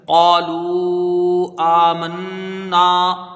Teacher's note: قاف میں الف مدہ ہے، ایک الف کی مقدار اس کی رہے گی · نون مشدد ہے، ایک الف کی مقدار یہاں غنہ ہوگا